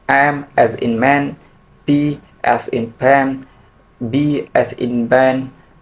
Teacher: The first one is bilabial. The point of maximum constriction is made by the coming together of the two lips.